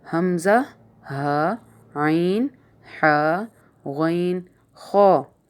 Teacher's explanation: یعنی یہ حلق سے ادا ہو رہے ہوتے ہیں، اس لیے ان کو حروف حلقی کہا جاتا ہے، کیونکہ یہ حلق سے ادا ہو رہے ہوتے ہیں۔